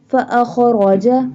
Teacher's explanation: Pronounce boldly because ra has fatha sign.